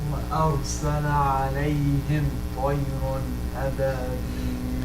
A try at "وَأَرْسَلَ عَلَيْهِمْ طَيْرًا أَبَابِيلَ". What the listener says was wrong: Jamil, but I want this a little bit more, the ghunna portion to it. The hukm, okay. So what is the hukm here? Meme. Meme is either, if it's not followed by a ba or not followed by a meme, it's going to be idhar.